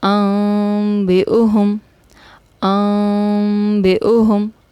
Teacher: میں نے غنہ بھی کیا اور میم کو بھی ادا کیا، نون ساکن کو میں نے میم میں چینج کر کے پڑھا ہے، تو یہ اقلاب کا رول ہے۔